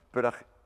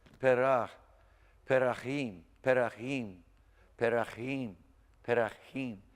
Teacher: Give the chet a little bit more of a K sound